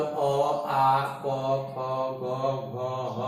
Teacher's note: अकुह विसर्जनीयानाम कंठ, इसका मतलब अ आ क ख ग घ ह और विसर्ग, इस सबों का उच्चारण स्थान कंठ